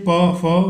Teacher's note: क्या है, ओष्ठ यानी कि हमारा होठ। जब भी हम प या फ बोलते हैं तो हमारे दोनों होठ आपस में टच होते हैं, चिपकते हैं